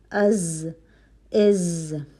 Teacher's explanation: ہوا کا چلنا محسوس نہیں ہوتا ہے، جہر کی کوالٹی ہے۔